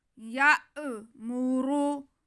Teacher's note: را پہ پیش ہے تو را موٹا کر کے پڑھا جائے گا